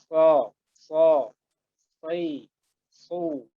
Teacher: Huruf shot, makhrajnya itu sama dengan huruf sin, cuman kalau huruf apa? Huruf shot itu pangkal lidahnya dinaikin.